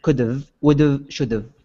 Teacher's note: we drop the H